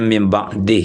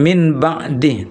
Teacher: Misalnya ayatnya mim ba'dih ya, bukan min ba'dih tapi mim. Nah, bunyi nun sukun itu diganti ditukar ke bunyi mim sukun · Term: iqlab